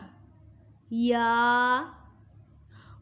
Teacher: یا زبان کے درمیان اور تالو کے درمیان سے ادا ہوتا ہے۔